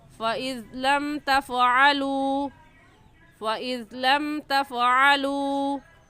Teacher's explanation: इस मीम साकिन पर गुन्ना नहीं करेंगे बल्कि जल्दी से पढ़ जाएंगे · फ़इज़ में ज़ाल नरम हरूफ में से है, नरमी से पढ़ेंगे